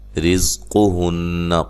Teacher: قاف کو موٹا، را کو باریک، نون مشدد پہ غنہ ضروری ہے